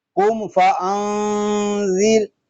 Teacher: قاف پر، میم ساکن میں اظہار شفوی، نون ساکن میں اخفا، را باریک۔ یہاں دیکھیں میم قاف اس لیے پر ہے کہ یہ حروف مستعلیہ میں سے ہے، میم ساکن میں اظہار شفوی اس لیے ہو رہا ہے کہ میم ساکن کے بعد حرف با اور میم کے علاوہ فا آ گیا ہے۔